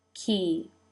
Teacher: the corners of the lips pull out now to make the E as in she in turkey.